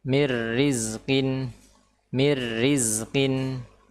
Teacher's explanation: huruf ra ketika kasrah maka dia menjadi tipis menjadi tipis